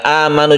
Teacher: di awal kata ini kita panjangkan satu Alif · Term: mad badal